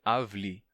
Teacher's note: com a transformação de e se fechando em I